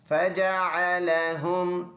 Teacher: हा सीने से अदा होने वाला है